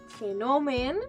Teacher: En el cas de fenomen, la O és oberta.